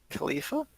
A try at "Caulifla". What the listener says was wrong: Caulifla. There's an L at the end, not Khalifa.